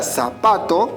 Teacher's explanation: las palabras graves o llanas en la palabra zapato y que la mayor fuerza de voz se encuentra en la penúltima sílaba no necesitamos colocarle tilde porque termina en una vocal esa es